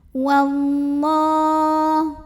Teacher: alif lam ini tidak perlu dibaca, diidghamkan langsung ke lam ya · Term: alif lam syamsiyah